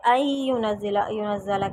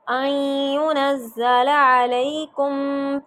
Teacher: این ہلکی سی نون کی آواز آئے گی